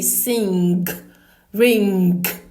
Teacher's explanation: you say as in sing, as in ring, but you don't pronounce the G. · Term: The nasal sound